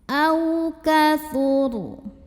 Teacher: Maka nun sukun ini dibunyikan dengan izhar atau jelas bunyi n-nya ya. Minhu au ada harfulin atau huruf lin karena ada waw sukun yang didahului fathah, maka dibacanya cukup kita lembutkan